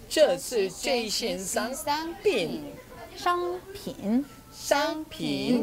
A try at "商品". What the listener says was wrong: 여기서 商 발음은 혀를 약간 말아서 발음하셔야 돼요.